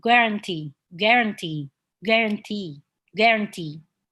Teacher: with the stress at the end of the word